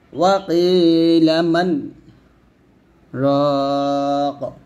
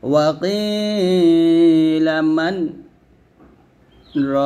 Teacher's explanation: মাঝখানে শুধুমাত্র আমার আওয়াজটাকে আমি একটু স্টপ করছি 1 থেকে 2 সেকেন্ডের মতো, কিন্তু আমার শ্বাস ঠিকই ছিল, আমার নিঃশ্বাস ঠিকই ছিল। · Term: সাক্তা